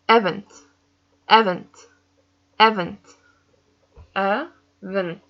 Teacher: I feel the stress in the ending